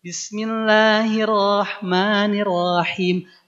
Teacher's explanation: La, ma-nya jelas, bukan jadi le atau me.